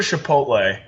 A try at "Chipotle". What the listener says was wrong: Did you just pronounce it Chipotle? Chipotle. It's a CH, not an SH.